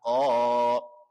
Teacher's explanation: Qalu, qa dibaca panjang. Hukumnya namanya mad asli atau mad tabi'i. Panjangnya 1 alif atau 2 harokat. Alasannya setelah harokat fathah ada huruf alif.